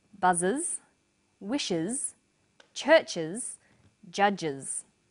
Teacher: Let's classify them. The first pronunciation of the final S is is. It's pronounced this way after sounds such as s, z, sh, ch and j.